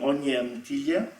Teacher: we get palatalization of the consonant and also glide absorption. The y of the oin goes into the consonant.